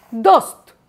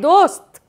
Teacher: দন্ত স আর ত, এই যে যুক্তধ্বনি, এইটা রয়েছে কোথায়, এটা রয়েছে শব্দের শেষ সীমায়